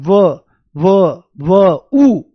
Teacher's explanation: जब आप व को बोलते हो तो आपको ऊ की आवाज आती है। बहुत हल्की सी। व उ की आवाज आती हुई दिखाई देती है।